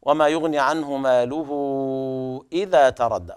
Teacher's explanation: النون مظهرة بسبب وجود الهاء بعدها